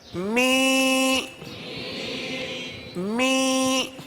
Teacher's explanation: ناک میں آواز لے جائیں گے، زیر کی آواز نکالیں گے